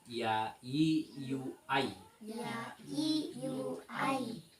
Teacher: Nah, ini keluarnya dari tengah-tengah lidah bertemu dengan menepati langit-langit bagian atas. Tengah-tengah lidah bertemu langit-langit bagian atas.